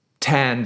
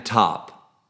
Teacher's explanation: tan is more forward than top